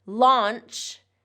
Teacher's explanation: launch has that ch sound, voiceless ch